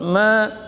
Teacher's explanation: Mim tawassut, ma panjang dua harakat kena alif mad, ya, karena ada alif mad sebelumnya fathah. Ma tipis dari dua bibir bagian dalamnya